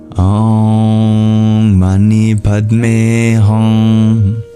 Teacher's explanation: the O comes in three beats, and the I and the HUNG comes in two beats, but the MANI and PAD comes in one beat.